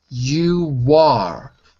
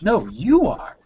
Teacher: So you notice how you have to put the stress on the are to show that you're underlining the importance of what you're saying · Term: strong form